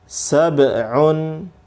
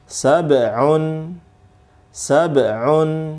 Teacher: ba, ini sukun, maka qalqalah, mantul